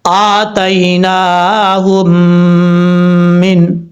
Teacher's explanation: میں پہلی میم جو ہے ساکن ہے، اس کو حذف کر دیں گے، یعنی گرا دیں گے، چھوڑ دیں گے. ہا کو جس میم کے اوپر شد ہے اس کے ساتھ کنیکٹ کریں گے. یہاں پہ ادغام مثلین ہو رہا ہے، یعنی دو حرفوں کا، دو ایک جیسے حرفوں کا آپس میں ادغام ہو رہا ہے.